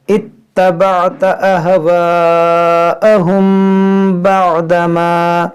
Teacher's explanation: یہاں میم ساکن کے بعد با ہے تو یہاں پر اخفا کریں گے